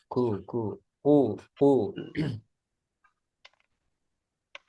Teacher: di sini hati-hati ya, qaf jangan ada udara